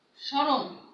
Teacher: শব্দের আদ্য বর্ণে ম ফলা যুক্ত হলে সাধারণত সেই ম অনুচ্চারিত থাকে।